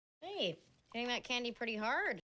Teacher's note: both T's are between vowel sounds that's why we pronounce them as a flap t or fast D